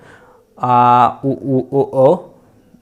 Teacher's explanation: पश्च स्वर का मतलब होता है जीभ के पीछे वाले भाग से काम करने वाले जो स्वर हैं आ उ ओ, देखिए बोल के देखिए आवाज़ वहीं से निकलेगी, ठीक है, तो ये हमारे क्या हो जाते हैं, पश्च स्वर हो जाते हैं।